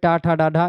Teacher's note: इनमें से मोरधन ध्वनियां मैंने आपको बताया था मोरधन ध्वनियों में टा ठ डा ढ ये मूर्धा से बोली जाती हैं